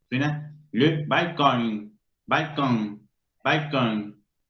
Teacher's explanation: está nasalizada porque la N no puede pronunciarse plenamente